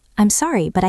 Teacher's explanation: The T in but becomes a soft D because it's between two vowels.